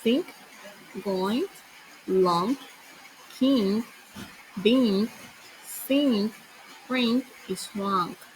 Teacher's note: The back of the tongue is up, touching the soft palate of the back of your mouth. · It is also produced by moving air through your nasal passage, but the tongue placement is different than the N sound. The tongue is raised and further back in your mouth. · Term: third nasal sound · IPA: ŋ